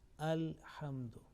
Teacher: Now simple is that here, look here, this lam with sukun, and lam here is not assimilated or merged, is clearly being pronounced